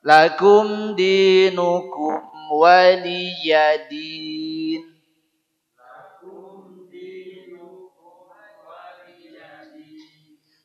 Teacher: Waliya dengan a juga salah. Yang betul waliya, waliyadin, huruf ya betul-betul nampak. Tulisannya memang iya, bukan hamzah, bukan alif.